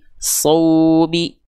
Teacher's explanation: Yang harus dibaca lembut dan lunak adalah waw sukun ya, atau ya sukunnya. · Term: lin